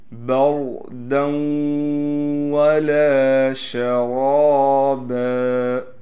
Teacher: را کے بعد الف ہونے کی وجہ سے را کو کھینچیں گے بھی اور را کو موٹا بھی پڑھیں گے۔